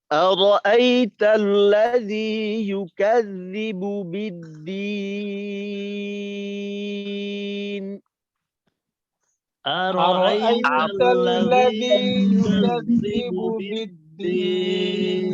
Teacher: টান নাকে যাবে না কিন্তু, দি খোলাখুলি হবে।